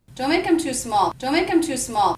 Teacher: Did you notice I reduced the word them to the schwa M sound? Because in this pronunciation, the word them begins with a vowel, and the word before, make, ends with a K, I'm going to make sure that those two words link and feel like one unit.